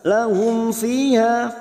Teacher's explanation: mim sukun bertemu Fa Idhar syafawi dibaca jelas